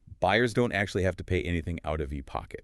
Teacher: the emphasis falls on buyers pay anything and pocket